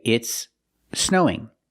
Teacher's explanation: Another important form of connected speech happens when we have two S sounds. One at the end of the first word and then another S sound at the beginning of the next word.